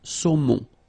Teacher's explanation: O-N, remember, nasal in your nose.